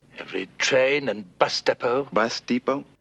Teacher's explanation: the e at the beginning would be pronounced like a e so it's depot with a very long e sound